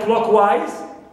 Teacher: wise is neutral suffix, clear, and clock is stressed